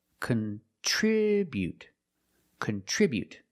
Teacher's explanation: With the verb, we say contribute. We put the stress on the second syllable.